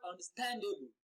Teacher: you can actually hear the increase in the pitch and in the duration of pronunciation